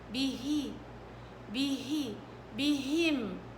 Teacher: بهم الهاء مرققة ومن أضعف الحروف، ومع ذلك كمان مكسورة، والكسر برقق زيادة